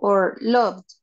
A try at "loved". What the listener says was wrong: Loved. Very good. Good pronunciation.